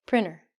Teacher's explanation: we are not going to say the t if it is with an n and between some vowels